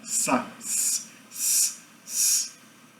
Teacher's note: Sá sem vibração na garganta